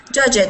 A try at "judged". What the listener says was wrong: No, not judge it. Judged. Judged. One syllable. That's the point.